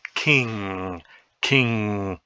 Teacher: notice again that it is not a cluster of an n and a g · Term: Velar nasal